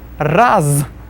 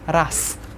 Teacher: We see raz, since z is there at the end of the word, we'll pronounce it as ras.